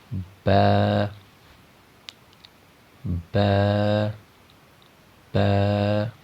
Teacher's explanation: با کا جو مخرج ہے، یعنی اس کے نکلنے کی جو جگہ ہے، وہ دونوں ہونٹوں کا تر حصہ ، یعنی دونوں ہونٹوں کے تری والے حصے